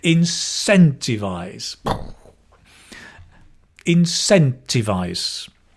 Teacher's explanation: the stress is the scent